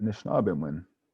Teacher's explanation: all that's left are the stressed vowels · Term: syncopation